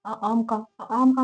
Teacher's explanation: पीछे से जीभ ऊपर उठ रही है, जहाँ से हमारा गला स्टार्ट होता है वहां से कुछ आवाज इसमें गले से भी निकलती है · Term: पश्च स्वर